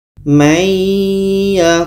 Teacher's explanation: bunyi Nun hilang masuk kepada ya dan di sini ada dengung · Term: idgham